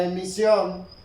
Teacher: Si tenemos nosotros la palabra emisión, el grupo de intensidad dominante va en la O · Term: sílaba tónica